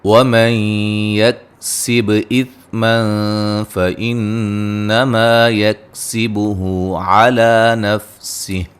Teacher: فَإِنَّمَا يَكْسِبُهُ عَلَى نَفْسِهِ نون ساکن کا ادغام مع الغنہ ہے با پہ قلقلہ کریں گے